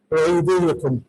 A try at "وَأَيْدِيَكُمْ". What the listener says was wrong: نہیں ایدیا یعنی یا پہ نصب پڑھنا ہے.